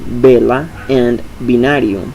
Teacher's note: In Spanish, those sounds are both bilabial in initial position